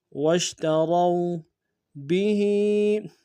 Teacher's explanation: را کو موٹا ادا کرتے واو کے ساتھ ملانا ہے، واو لین بغیر کھینچے پڑھیں گے